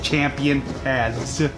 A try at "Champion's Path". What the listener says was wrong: Champion's Path. You said Champion Paths.